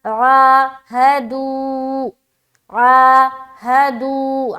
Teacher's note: عا میں کھینچ رہے، دو میں کھینچ رہے، بیچ میں ہا ہے جس کے اوپر زبر ہے، اسے بالکل بھی نہیں کھینچنا، بغیر کھینچے پڑھیں گے۔